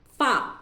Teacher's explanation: اوپر کے دانتوں کو نیچے کے ہونٹ کے تر حصے کو لگانے سے فا نکلتا ہے. اوپر کے دانتوں کو نیچے کے ہونٹ کے، اوپر کے دانت جو ہے نا اس کو ہے نا نیچے کے ہونٹ کے تر حصے کو، خشک حصے کو نہیں بلکہ تر حصے کو لگانے سے فا نکلتا ہے.